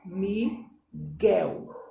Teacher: a sílaba tônica é guel